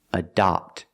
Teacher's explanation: Adopt with the open sound. The first syllable is a schwa, closed sound